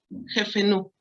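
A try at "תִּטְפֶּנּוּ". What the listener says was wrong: Esta es la tab que suena como una T. Esta tab tiene un jirik. ¿Recuerdas cómo suena el jirik?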